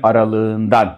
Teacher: K ğ oldu ve böyle bir ses olayını Biz ünsüz yumuşaması yani değişimi diyoruz